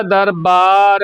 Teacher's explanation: ਹੈ ਬਬਾ ਲੱਗਿਆ ਹੋਇਆ ਕਈ ਵਾਰੀ ਦਰਬਾਰ ਬੋਲਿਆ ਜਾਂਦਾ ਧਿਆਨ ਦੇਣਾ ਬਬਾ ਲੱਗਾ ਬੁੱਲ ਦੋਨੇ ਜੋੜਨੇ ਪੈਣਗੇ